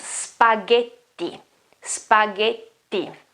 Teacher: It's not J, it's ge. And the double T here makes the sound longer and stronger. As I always say, when you have a double consonant, it's almost twice as long as a single consonant.